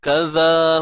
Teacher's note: Baik, huruf zal keluar ke hujung lidah.